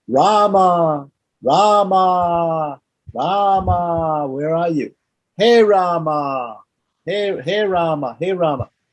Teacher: The vocative is a little bit different from the nominative, in that the visarga is dropped in the singular.